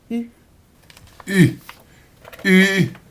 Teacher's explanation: allongeant les deux lèvres en dehors, les approchant aussi l'une de l'autre sans les joindre tout à fait